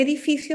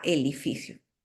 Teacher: cambio la d por una l que es una líquida en lugar por ejemplo de decirme espada Okay Eh me dice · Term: sustitución de D por líquida